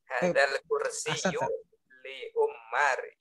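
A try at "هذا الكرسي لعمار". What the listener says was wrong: Ammarin. Ammarin, rin pakai tasdid. Pakai apa? Pakai tanwin. Ammarin. Kenapa memakai tanwin? Karena dia tidak pakai alif lam, ma'rifah. Tapi dia sudah ma'rifah karena menunjukkan sebuah nama.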